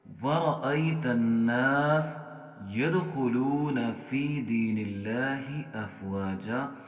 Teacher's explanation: یدخلون کے اندر دال کے اوپر ہم قلقلہ کریں گے